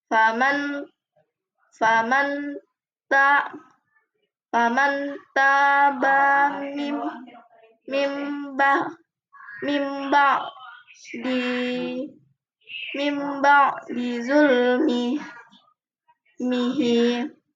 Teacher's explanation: nun sukun diganti menjadi mim sukun dan dibaca dengung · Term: iqlab